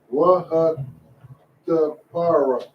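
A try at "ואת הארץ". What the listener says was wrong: No. You keep saying tie. Ain't no tie in there. Right. The para. You said not ta. Don't say ta. No ta in it. Waha the pa arath. Ta pa arath. Do you say arath?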